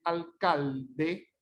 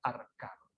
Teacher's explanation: El lateral se realiza como la vibrante simple y se llama rotacismo. Entonces es cuando usted debe decir alcalde, dice arcalde.